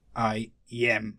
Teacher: So I is unstressed while yam is stressed. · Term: iamb